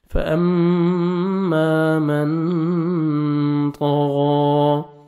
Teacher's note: من نون ساکن کا اخفا ہے، نون ساکن کے بعد دیکھیں طا ہے، یہاں پہ آپ نے اخفا کرنا ہے، طا کو موٹا کر کے پڑھنا ہے، غین کو بھی موٹا کرنا ہے، اور 1 سیکنڈ کھینچنا بھی ہے، کھڑا زبر ہے۔